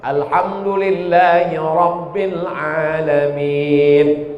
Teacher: Ra-nya mesti tafkhim tebal.